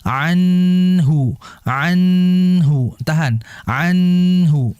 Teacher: Yang betul anhuma. Nun kan di ujung lidah. Jadi ujung lidahnya itu ditahan aja ke gusi.